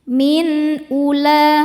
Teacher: Ada hukum idhar halqi, karena ada nun sukun bertemu dengan huruf halqi atau huruf tenggorokan, yaitu hamzah. Cara bacanya nun dibaca dengan jelas.